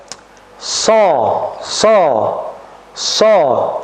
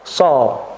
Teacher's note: sifat daripada shad itu adalah idbaq, yaitu menempelnya lidah kita ke langit-langit yang atas